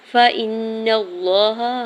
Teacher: حمزہ کی زیر کو نون مشدد کے ساتھ ملاتے ہوئے غنہ کرنا ہے، اور نون کی زبر کو لام جلالہ کے ساتھ ملاتے ہوئے اللہ کے نام کو پر پڑھیں گے اور اوپر کھڑی زبر 2 حرکت کھینچ کے ادا کریں گے۔